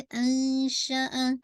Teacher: शीन में तफशी है तो थोड़ी सी आपकी आवाज फैलेगी.